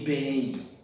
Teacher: Esse o M aparece com som de I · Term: ditongo decrescente